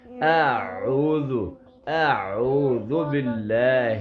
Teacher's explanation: عین گلے کے درمیان سے اس کی آواز آئے گی